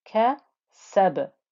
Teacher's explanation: So sin joining the letter ba, and ba with a sukoon now is going to give you that bouncy qalqala noise